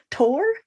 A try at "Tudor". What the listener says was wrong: Oh, Tudor. Oh, you pronounce everything. There are no silent syllables. Everything's as phonetic as I can get it.